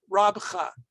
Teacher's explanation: Rab, b'cha. We don't say the 2 bet sounds, it becomes 1 sound